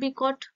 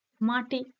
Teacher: দন্ত ধ্বনি এবং তার আগে যেহেতু মূর্ধন্য ধ্বনি আছে ফলে সেই দন্ত ধ্বনিটা মূর্ধন্য ধ্বনির প্রভাবে সেও মূর্ধন্য ধ্বনিতেই রূপান্তরিত হয়ে যাচ্ছে